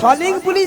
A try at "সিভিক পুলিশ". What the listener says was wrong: সলিং পুলিশ নয়, বলো সিভিক পুলিশ।